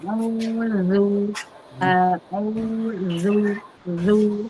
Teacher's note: Auzu tidak ditahan monyong di depan dari au ke zu-nya